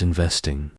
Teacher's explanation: Practice saying it in a smooth, even pace, ensuring that the vest part is pronounced with a slightly louder and clearer sound than the other syllables. You can break it down into syllables and practice each one separately before combining them into the complete word. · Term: stress